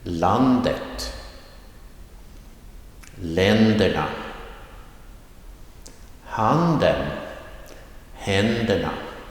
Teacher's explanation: the rising tone comes in in the very beginning of the word on the first syllable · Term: accent 1